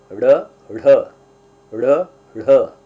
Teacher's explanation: ಉತ್ಕ್ಷಿಪ್ತ ವ್ಯಂಜನ ಅಂತಅಂದ್ರೆ ತಕ್ಷಣಕ್ಕೆ ನಾಲಿಗೆ ಕೆಳಗಡೆ ಬರ್ತಕ್ಕಂತದ್ದಕ್ಕೆ ಉತ್ಕ್ಷಿಪ್ತ ಅಂತ ಕರೀತಾರೆ